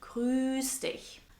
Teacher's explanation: Jemanden grüßen means to greet someone and is pronounced with a long stretched ü sound.